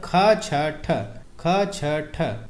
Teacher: ख छ ठ ये जो है हमारा महाप्राण वाला वर्ग है